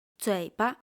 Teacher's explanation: The second word loses its original tone, ba, and become neutral tone.